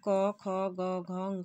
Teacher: क वर्ग के जो व्यंजन हैं इनका जो उच्चारण स्थान होता है कंठ या गले से होता है, इसलिए इनको कंठ वर्ण कहा जाता है।